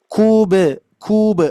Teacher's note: huruf ba ba sukun ketika mantul itu sebetulnya ringan, Pak, Bu.